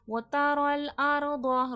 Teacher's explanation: را پہ زبر ہے پر کر کے موٹا کر کے پڑھا جائے گا